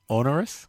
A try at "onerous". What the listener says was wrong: Onerous. You got to put the R in there.